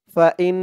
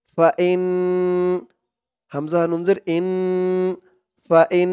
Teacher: ফাইন ইন বলে আবার গুন্নাহ করতে হবে ওয়াজিব গুন্নাহ